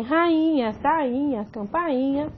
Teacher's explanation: Rainha, você tem uma penúltima sílaba tônica que é formada somente pelo I. Posteriormente à sílaba, você tem o NH.